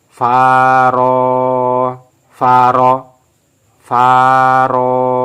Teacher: Fa dibaca panjang, ro dibaca panjang. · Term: mat